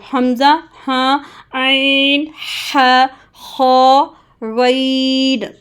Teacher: یہ تھروٹ کے حروف ہیں جو کہ آپ نے صرف اور صرف گلے سے، تھروٹ سے ادا کرنے ہیں